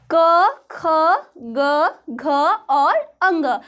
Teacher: तो क वर्ग का जो उच्चारण है वो कहाँ से होता है? कंठ से।